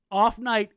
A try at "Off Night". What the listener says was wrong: You got to say it almost one word, though, to make it sound like a name, like Off Night.